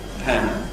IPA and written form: pæənd (pound)